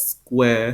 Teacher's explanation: So again, as General American English as a rhotic accent, rounded square sound. Southern Standard British English has that square, so extended vowel. And then in received pronunciation, as well as the transatlantic accent, both Eastern Standard American English and American Theater Standard, that R sound is replaced by a schwa, so square.